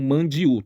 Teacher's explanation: esse n ele passa nasalidade para o a